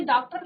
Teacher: इसका उच्चारण आ तथा ओ के बीच का होता है, यानी कि ना तो आप इसको पूरा से आ बोलेंगे ना तो इसको ओ बोलेंगे, ठीक है। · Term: आगत ध्वनि